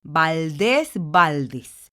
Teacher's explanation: La sílaba tónica se encuentra en des, en la última sílaba, y termina en S. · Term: palabra aguda